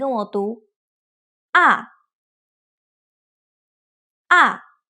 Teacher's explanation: ah down to pronounce it you need to allow your pitch to drop